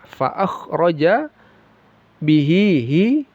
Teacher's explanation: faakhroja bihi mad silah qasirah panjangnya dua harakat